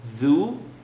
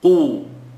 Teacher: Because dhal is light and it has an u. So dhu, qu. Qaf is heavy and has an u. So I should be able to hear the light dhu and the heavy qu.